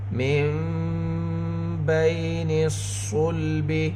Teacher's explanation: لنسفعا بالناصیہ من بین الصلب، نون ساکن کے بعد با، نون ساکن میں اقلاب ہوگا، نون کی آواز کو اس کو من نہیں میم پڑھیں گے، نون کی آواز کو میم سے بدل کر پڑھیں گے گنہ اور اخفا کے ساتھ